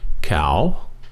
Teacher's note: Cow, rising tone.